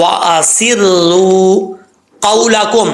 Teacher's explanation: क़ाफ हुरूफ मुस्तालिया में से है, पुर पढ़ा जाएगा। आफ के बाद वाव है, वाव मद्दा, सॉरी वाव लीन है, मद्दा नहीं है।